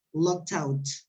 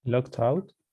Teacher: the first word ends with uh with a consonant sound and the next word starts with a vowel so you put it together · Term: connect the two words